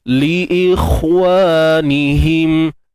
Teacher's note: Li ikhwanihim, untuk huruf kha yang dimatikan, tuan-tuan dan puan, walaupun dia sukun dan sebelumnya baris bawah hamzah ni kan, huruf kha tu tetap dibunyikan dengan tebal